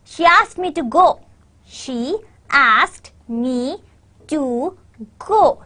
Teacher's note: your stress is on ask and go